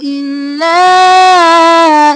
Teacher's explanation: لا کو تین الف کے برابر